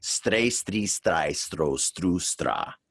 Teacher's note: Now we're tapping the R like the Japanese do with the letter R.